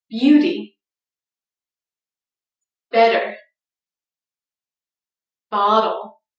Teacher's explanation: t reduces to a light d when it comes between two vowel sounds even when it comes between vowel sounds in two words that